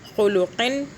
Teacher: نون کو چھپایا نہیں، یہاں پہ ہولڈ نہیں کیا، گنہ نہیں کیا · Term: اظہار